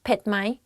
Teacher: don't forget to raise your tone up because it's the question